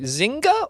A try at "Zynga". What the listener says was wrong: Zynga. I think you pronounced the G, yeah. I think it's Zynga, but I don't know for sure.